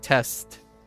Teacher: the con end of consonant now like a lot of PE most people in American English uh drop the consonants at the end of letters now or words like test